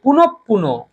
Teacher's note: বিসর্গর মানে হচ্ছে পরবর্তী ব্যঞ্জনের দ্বিত্ব ঘটায়